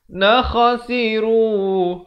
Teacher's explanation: Nakhasiru, kha makhrajnya di hujung kerongkong. Khasiru dibaca 4 atau 5 harakat.